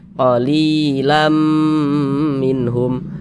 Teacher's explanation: Lamnya kita tahan, kita panjangkan sejenak.